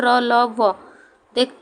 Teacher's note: जो ध्वनियाँ स्वर और व्यंजन के बीच में स्थित हो उन्हें अंतस्थ व्यंजन कहते हैं। इनका उच्चारण करते समय जीभ का मुंह के किसी भी भाग से पूरी तरह स्पर्श नहीं होता।